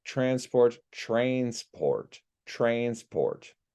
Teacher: we have the a n becoming an a i n Sound